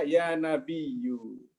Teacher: orang Quraisy nggak suka dengan hamzah, maka panggil saja ya Nabiyu gitu ya